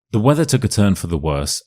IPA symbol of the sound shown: ə